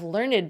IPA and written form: lɝnəd (learned)